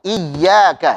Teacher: Coba kita baca ya-nya ditasydidkan, ditekan sambil kita tipiskan huruf ya-nya. Iyyaka. Silakan.